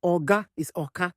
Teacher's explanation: G becomes K. Oga is Oka.